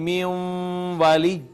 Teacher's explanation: واو کا ما قبل نون ساکن لہٰذا واو نے اس کو اپنے اندر مدغم کر لیا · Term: ادغام